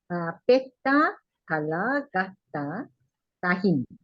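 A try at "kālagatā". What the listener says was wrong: Kala, gata. Because in reading Pali, we have to be very careful about long letters and the short one, especially vowels. You can see the upper bar here.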